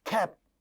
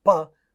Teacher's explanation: In a word like cap, the last sound is pa, which is an again unaspirated voiceless bilabial stop sound.